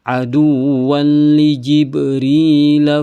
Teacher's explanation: ada huruf ba yang sukun Berarti dia qalqalah harus dipantulkan.